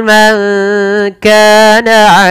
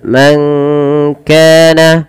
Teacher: menyamarkan suara nunnya kepada huruf kaf. Maka terdengar seperti bunyi ada eng, tapi dia bukan eng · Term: ikhfa